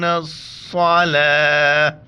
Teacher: وقف کی حالت میں یہ گول تا ہاں میں تبدیل ہو جاتا ہے